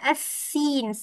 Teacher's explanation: So kita nak assin. Sin lidah betul-betul ke arah bawah.